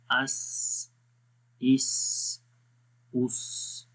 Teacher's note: سی ٹی کی آواز آتی ہے سین کے اندر، اس کی جو کوالٹی ہے وہ صفیر کے نام سے ہے